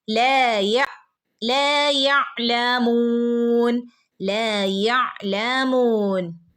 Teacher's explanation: ലാമിന്റെ കൂടെ അലിഫ് മദ് വന്നിട്ടുണ്ട് ട്ടോ അപ്പൊ രണ്ട് അനക്കം നീട്ടി കൊടുക്കണേ